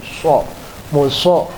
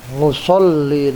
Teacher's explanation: Musallin itu hurufnya sod, ya. So, muso ya. Agak dimonyongin